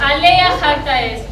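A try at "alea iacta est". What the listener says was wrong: No, es alea yacta est. No, se escribe jacta, pero se pronuncia yacta.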